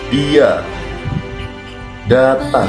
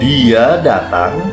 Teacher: Dia datang memiliki nada turun karena merupakan penjelasan. Sedangkan dia datang itu nadanya agak sedikit naik karena dia bertanya kepada lawan pembicara.